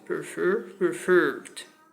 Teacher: Prefer is a verb with two syllables. Two syllables. The second syllable is stressed. So we double the R because it occurs in a stressed syllable.